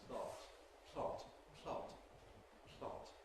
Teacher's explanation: In the case of plot, the aspiration happens during the L. So we get plot, plot, plot, plot. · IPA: [pl̥ɒt]